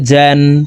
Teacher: জিম হরফ কে জিহ্বার মধ্যখান থেকে পড়তে হবে